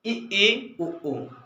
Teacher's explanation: हमारा मुख द्वार क्या हो रहा है, पूरा लगभग लगभग बंद हो रहा है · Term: समृद्ध